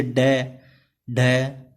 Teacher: जीभ की नोक तालू को कुछ दूर तक छूकर मुख द्वार को झटके से खोलती है